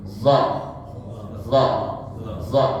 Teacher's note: lidahnya yang punggung atasnya itu melengkung ya lengket tetapi ujung lidahnya melengkung Begini Nah jadi seakan-akan dia tidak lebih ujung lidah dari gigi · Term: huruf d